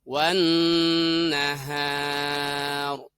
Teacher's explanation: Nah, begitupun yang contoh kedua ini, di mana alif lamnya ini idgham masuk atau lebur ke huruf nun, maka membacanya adalah wan nahar, gitu ya. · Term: alif lam syamsiyah